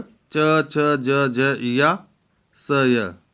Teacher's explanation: तालव्य व्यंजन, इसका मूल स्थान क्या है? तालु है।